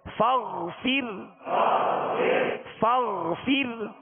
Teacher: اس کو معروف پڑھنے کے لیے زیر کی آواز میں آواز گرائیں گے